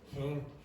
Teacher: Okay, for Portuguese speakers, if the word, and sometimes Spanish speakers, if the words end in a m, a n, or an n sound, very often, Brazilians especially, will make these vowel sounds very nasally. So you go, him, you don't want that in English.